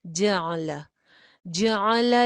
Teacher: جعل جیم کے اوپر بھی زبر ہے، عین کے اوپر بھی زبر ہے، لام کے اوپر بھی زبر ہے، تینوں لیٹرز ایک جیسے ادا ہوں گے، کوئی بھی زبر لمبی نہیں کرنی